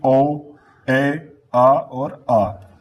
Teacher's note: जब हम बड़ा आ का उच्चारण करेंगे तो यहां पे हमारा पूरा मुख खुलेगा। अर्ध विवृत्त जिसमें आधा मुख खुला रहे